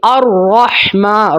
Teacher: را کے اوپر زبر ہے تو را کو موٹا کر کے ادا کریں گے